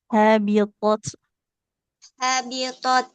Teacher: jadi aliran nafas di huruf ta-nya nggak boleh ketinggalannya